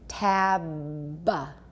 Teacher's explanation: all there's no break at all be is a stop but even when our lips are together there's an occlusion the voicing continues down here so the sound does not stop at any point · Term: fully voiced be